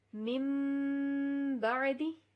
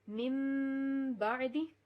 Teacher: ہم ان نون ساکن کی آواز کو میم میں بدل دیں گے. اس کو کہتے ہیں اقلاب، قلب کرنا.